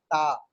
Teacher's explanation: lingua alveolar है, यानी आपके जो जबान है वो मसूड़ों से टकराएगी तो फिर निकलेगा टा